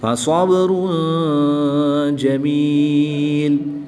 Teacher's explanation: दो पेश की तनवीन को वक़फ़ की हालत में साकिन कर देंगे